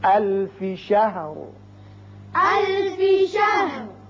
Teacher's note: لہذا یہاں وقف کریں گے، وقف کی صورت میں جب را ساکن ہوگا تو اس کو پر پڑھیں گے چونکہ پیچھے زبر ہے